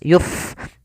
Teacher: Pada lafal pada lafal fa ada fa yang dia sukun, memiliki sifat hamas, maka dibaca dengan mengalirkan nafas. Yuf, jangan yup dengan pa.